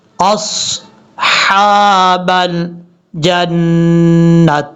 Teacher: حمزہ کے بعد جو صاد ہے یہ صاد فل موت پڑھا جائے گا، اس کو بریک نہیں پڑھنا